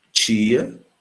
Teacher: você nota que o T está diante do I e produz um chiado, uma palatalização, uma articulação que não é alveolar nem dental, é uma articulação africada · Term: africada, palatalizada